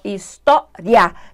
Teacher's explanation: Tá vendo que o A tá bem mais forte? Então esse I é uma semivogal e esse A é uma vogal. Então aumentou, cresceu, história. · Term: ditongo crescente